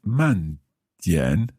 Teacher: Okay, so 慢 点. So that's 慢, fourth tone. 点, third tone.